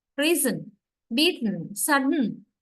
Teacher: because the vowel is absent vowel is not pronounced · You don't get the vowel sound that prominently, right? Actually, the vowel is absent there. Sudden, no vowel. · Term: syllabic